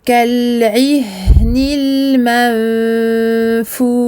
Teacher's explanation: La langue ne joue plus son rôle comme pour un noun normal et ne va pas être posée sur le palais. · je termine avec un soukoun et je donne au shin son écoulement total du son, ainsi que son tafashi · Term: al-irfa, shin final sakin